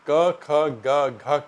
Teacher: क ख ग घ का उच्चारण गले से होता है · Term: क वर्ग